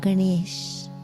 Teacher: the tongue is retroflex on the N, Na, is curled back like Ganesha's trunk.